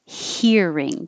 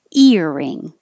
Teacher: you don't have the airflow first you just start immediately with the vowel